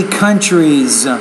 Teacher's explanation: You want to put the S on the end of countries and even pronounce it as a Z in that case.